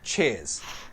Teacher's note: Pronunciation, it's flat, one syllable, cheers. Cheers ya. Jadi R-nya hilang, cheers ya.